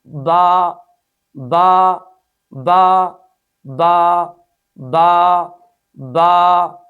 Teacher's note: اس حرف کو ادا کرتے وقت دونوں ہونٹوں کو سختی سے ملائیں گے، یعنی تری والے حصے کو آپس میں جب ملائیں گے تو سختی کے ساتھ ملا کر اس حرف کو ادا کریں گے